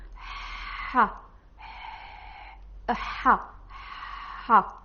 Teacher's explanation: You are using only the top of your throat and you are saying ha, ha, ha. So you are trying to make the sound from this point exactly.